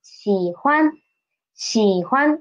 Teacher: and 欢 is neutral tone